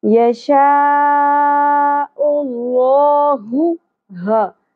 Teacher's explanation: بڑی مد ہے، مد متصل، اس کو ہم نے 5 الف کے برابر کھینچنا ہے